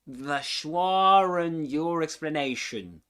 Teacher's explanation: Schwa and your explanation is a perfect example of the intrusive R sneaking in. The R links the two vowel sounds together, making the speech flow smoothly.